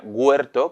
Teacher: tiende a tener un refuerzo velar delante de los diptongos